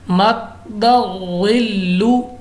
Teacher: ग़ा मुस्तालिया है और दाल हमारे पास कलकला है तो हमने जमाओं के साथ और मोटा करके पढ़ा है